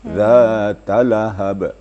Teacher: Jangan ditahan suara pada ta. Karena itu tidak panjang sama sekali